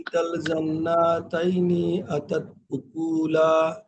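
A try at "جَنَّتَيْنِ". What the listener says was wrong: খোকা একটু ইন্টারাপ্ট করে, এই যে জান্না এখানে কোনো টান নাই, কিন্তু সাথে সাথে চলে আসবে জান্নাতাইনি। গুন্না জান্না, নার পরে টান হবে না, সেটা বলতেছি খোকাকে।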